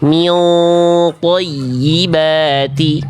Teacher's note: Jadi, di antara 15 huruf ikhfa ini ada huruf-huruf tebal, yaitu shod, dhod, tho, dhzo, qof. Jadi, kalau misalnya huruf ikhfanya ketemu huruf tebal, si pangkal lidah itu sudah naik ketika ikhfa biar nuansa ikhfanya tebal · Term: ikhfa hakiki